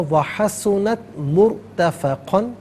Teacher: रॉ साकिन माक़बल मीम पर पेश है तो रॉ साकिन को पुर करके पढ़ा जाएगा। व हसुनत मुर्तफ़क़न, यहाँ वक़्फ़ करेंगे तो मुर्तफ़क़ा पढ़ा जाएगा।